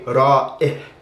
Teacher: the hamza in spoken Arabic isn't very distinct, especially with this kind of hamza with an I sound. It just sounds like ya with a kasra